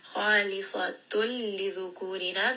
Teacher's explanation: this is going to be idgham without ghunna, merge them together.